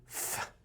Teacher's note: technically the f is something I do with my lips against my teeth but it still involves the lips.